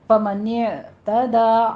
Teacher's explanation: آئین کو وسط حلق میں لے جا کے سٹاپ کیجیے. فمن یہ جھٹکا نہیں دینا، نہیں کہنا.